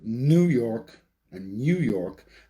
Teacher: that n sound is produced at the alveolar ridge